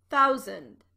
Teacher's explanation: the last syllable of thousand is not pronounced sand. It's an unstressed syllable and pronounced zund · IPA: / tɛn ‘θaʊ.zənd /